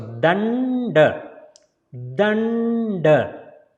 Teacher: So first D is pronounced as a D and second D is pronounced as a D. So first D, tongue between the teeth, the, and second D is pronounced as a D, tongue touching the hard palate.